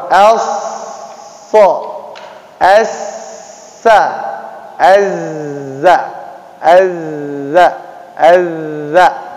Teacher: Shad, sin, zai, ujung lidah dengan rongga antara gigi atas dengan gigi bawah